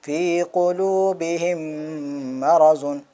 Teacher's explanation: میم ساکن کے بعد میم آیا تو میم کو میم سے ملا کر کے ہم غنہ کے ساتھ پڑھیں گے۔